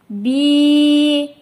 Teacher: Я өзүнөн мурда касра келсе, касраны созот.